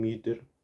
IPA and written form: mʏtɐ (mütter)